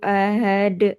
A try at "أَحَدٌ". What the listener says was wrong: Ahad tenggorokan tengah. Hanya pendek, jangan ahad. Ahad. Betul, tapi nggak pakai angin. Had.